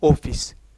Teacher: हमारे जो होठ है एक राउंड के रूप में आएंगे या गोल वृत्त के रूप में आएंगे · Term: वृत्तमुखी